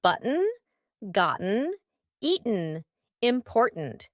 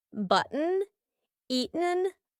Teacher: do you notice that my throat is stopping that t sound in the middle of the word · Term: glottal T